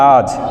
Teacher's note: আমরা দেখলাম হ্রস্ব ই স্বরধ্বনিটি শেষ থেকে লোপ পেয়েছে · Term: অন্তঃস্বরলোপ